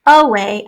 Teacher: that first syllable is a schwa